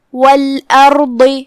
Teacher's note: ہم را کو اور ضاد کو دونوں کو بھاری آواز میں ادا کریں گے